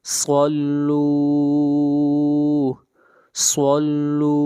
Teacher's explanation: صوت حروف مستعلیہ میں سے ہے، موٹا پڑھیں گے